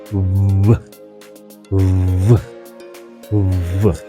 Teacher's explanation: कमज़ोर, मुख्तसर लेकिन आवाज़ वाली, यानी वीक, शॉर्ट बट वॉइस्ड होती है